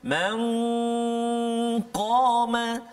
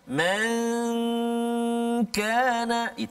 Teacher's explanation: huruf qaf tebal, huruf kaf tak tebal